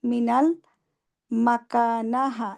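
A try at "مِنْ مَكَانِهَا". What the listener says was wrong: মিনাল হবে মিন, আলিফ লাম নাই, মিন মাকানিহা,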